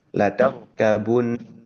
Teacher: Tipisnya yaitu huruf ta fathah, kemudian tebalnya itu ada di huruf ra sukun yang didahului fathahnya huruf ta. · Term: ra-nya tebal